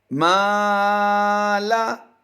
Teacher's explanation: ہم نے پہلے زبر کو کھینچا ہے، لام کی زبر کو ہم نے نہیں کھینچا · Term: حروف مدہ